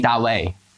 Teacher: čínština nemá naše české znělé d, takže říkají ta